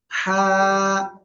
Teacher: গলার মধ্যখান থেকে গলা চেপে এক আলিফ টেনে উচ্চারণ করতে হবে